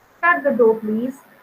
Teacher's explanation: So when I'm saying please, it is coming downwards. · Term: falling tune